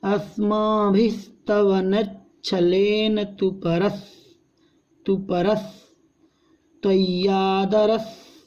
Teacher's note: देखिए अस्मा यहाँ पर ज़्यादा रुकना नहीं है, नहीं तो गड़बड़ हो जाएगा, क्योंकि आधे सा का उच्चारण हमें बहुत स्पीड में करना पड़ेगा। अस्माभि, यहाँ विसर्ग का भी उच्चारण है।